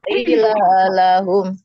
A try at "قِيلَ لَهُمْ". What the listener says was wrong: Qila lahum terbalik. Ki-nya panjang kopnya.